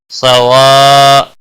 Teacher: صاد حروف مستعلیہ میں سے پر پڑا جائے گا